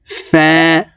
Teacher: ফা হরফ উপরের দাঁত নিচের ঠোঁটের পেটের সঙ্গে লাগিয়ে উচ্চারণ করতে হবে